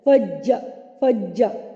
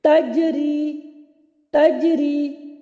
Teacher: جیم کی دفعہ زبان کا جو وسط ہے وہ اوپر تالو کی جانب اٹھ رہا ہے